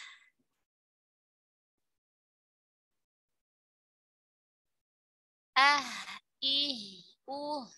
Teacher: Ha ketika sukun dia mengalir nafas, mengalir suara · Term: huruf H